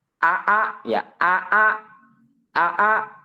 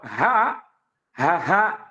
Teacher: dia itu jahr sifatnya artinya tidak mengeluarkan napas sedangkan kalau ha ha ha nah dia mengeluarkan napas